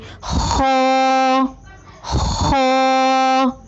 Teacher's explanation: خا کی ادائیگی میں زبان کی جڑ کو تالو کی طرف بلند کرتے ہوئے موٹی آواز میں پڑھیں، یعنی خا۔ آئیے مشق کیجیے۔